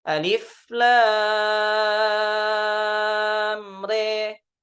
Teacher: Kemudian di riwayat Syu'bah dibaca imalah. Bi imalati fathati ra wal alif. Dengan membunyikan menjadi ya.